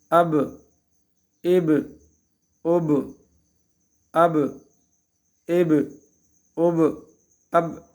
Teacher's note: اب اب بغیر حرکت کے اب یہ غلط ہو جائے گا چونکہ حروف قلقلہ میں سے ہیں اس میں تھوڑی سی حرکت دی جائے گی